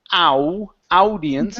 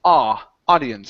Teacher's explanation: So when we have an AU like that, okay, it's typically only going to be an ah sound. So instead of saying ow, audience, it's ah, audience.